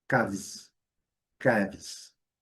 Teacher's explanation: E esse S vai ter o som de Z, é o som de z. Então é caves, caves, o som de Z.